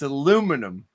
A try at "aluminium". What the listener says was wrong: It's aluminium, and you've changed the spelling. Yeah, darling, extra syllables.